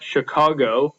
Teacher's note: So the stressed syllable is in the middle.